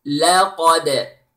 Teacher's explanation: The lam is light The qaf is heavy, and then the dal is light with qalqala.